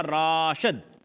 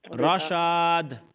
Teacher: जी हाँ, तो ये देखिए आपने बिल्कुल उल्टा किया, रा को लंबा किया हालांकि रा लंबा नहीं है, और शीन को लंबा नहीं किया हालांकि शीन लंबा है